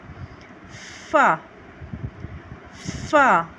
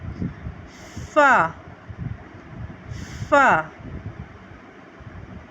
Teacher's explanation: अदा करते हैं ज सीन सद ज सीन सद फ फ ऊपर के दांतों के किनारे और नीचे के होठ की तरी वाले हिस्से से हम फा अदा करते हैं